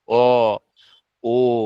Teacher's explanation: অন্যদিকে পিছনের দিকে যে ধ্বনিগুলো আছে, অ, উচ্চারণ করলেই দেখা যাচ্ছে ঠোঁটটা কিছুটা কুঞ্চিত অবস্থায় জড়ো হয়ে আছে। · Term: কুঞ্চিত স্বর